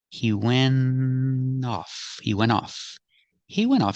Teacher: the t is a stop T you don't really hear it